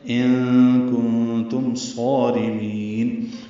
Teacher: نون ساکن کے بعد کاف اور پھر نون ساکن کے بعد تا آنے کی وجہ سے دونوں جگہ اخفا ہے